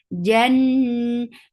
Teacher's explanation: jim has shidda, no flow of sound. Jan, unna akmal, so keep the sound in your nose for a longer time.